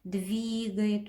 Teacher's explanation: Двигает. Ударение падает на И.